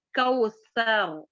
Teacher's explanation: سامنے کے ثنایا اولیاء کے دانتوں کے کناروں پر ٹچ کرنے سے سا کا مخرج ادا ہوتا ہے